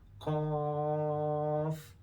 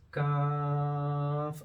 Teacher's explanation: Qaf is at the back and kaf is a bit further up. So this is kaf, a bit longer, but belonging to the same family as qaf.